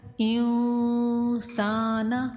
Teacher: سین الف سا کو لمبا کریں گے، نون کو بغیر کھنچے پڑھیں گے